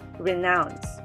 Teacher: first syllable is re and the second syllable is nouns renounce this time the stress is on the second syllable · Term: primary stress